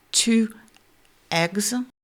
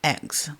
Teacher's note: Et là, pour le coup de glotte, c'est le mécanisme opposé au H, c'est-à-dire que pour le H, il faut la la glotte grande ouverte qui laisse passer l'air, mais le pendant de ça, c'est l'occlusive glottale, c'est-à-dire un son pour lequel la glotte va se fermer brusquement